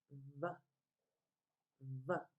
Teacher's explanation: you have to use your teeth to make the V sound. Put your teeth on your lips.